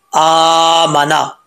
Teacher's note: हमज़ा के ऊपर खड़ा ज़बर है तो इसको लंबा करेंगे